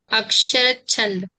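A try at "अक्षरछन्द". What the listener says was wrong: अक्षरच, च को तो आपने पूरा बना दिया, इतना उच्चारण नहीं आएगा, अक्षर छंद ऐसा, ठीक है।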